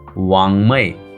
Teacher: उंग हे एक अनुनासिक आहे आणि याचा उच्चार न सारखा करावा जसे वांगमय ग याचा उच्चार नाकातून करतात.